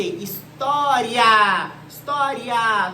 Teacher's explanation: Quando eu falo assim pra você, história, história, perceba que o I é uma semivogal, é um som fraco, e o A é uma vogal, é um som forte. Se a semivogal, ou seja, a vogal com som fraco, vier primeiro do que a vogal, então é um ditongo crescente, porque na escala de timbre o som cresce.